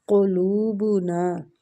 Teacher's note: لو وہ مد کے ساتھ ہے، لو کو بھی کھینچیں گے۔ قلوبنا، لو کو وہ مد کی وجہ سے کھینچیں گے۔ بنا، نون کو الف مد کی وجہ سے کھینچیں گے۔